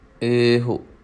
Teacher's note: ਈੜੀ ਲੰਬੀ ਰੱਖਣੀ ਹੈ, ਹਾਹੇ ਨੂੰ ਥੋੜ੍ਹਾ ਜਿਹਾ ਘੱਟ ਆਵਾਜ਼ ਦੇਣੀ ਹੈ।